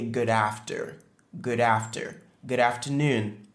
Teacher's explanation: Je vous fais remarquer aussi la liaison entre good et after, qui est good after, good after, good afternoon.